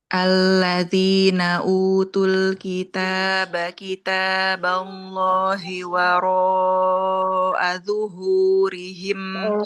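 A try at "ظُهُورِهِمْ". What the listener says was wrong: Tebalkan lagi di huruf dho.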